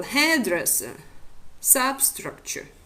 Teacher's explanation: words where the first syllable is under primary stress and all the first word is under the primary stress and the second and the secondary stress for example headdress substructure